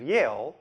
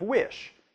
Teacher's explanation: There’s no clear spot between where the glide ends and the vowel begins. One sound just smoothly spills into the next. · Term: glides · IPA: [j]